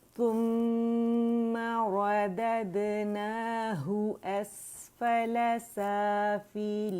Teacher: अच्छा, यहाँ रोल करेंगे, सा के ऊपर दम्मा है, कंप्लीट रोलिंग होगी। मीम हर्फ गुन्ना मुशद्दद है तो उस पर हमने अकमल ग्रेड का गुन्ना करना है 2 काउंट्स का। ठीक है, रॉ मोटी है और दैल के ऊपर फतहा है।